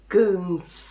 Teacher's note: Cansado é o sa, a sílaba mais comprida, a sílaba mais forte.